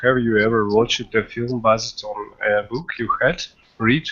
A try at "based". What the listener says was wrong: Not buzzed, but based. Yeah? Based.